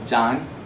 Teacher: I can see that the vowel is a back vowel, A.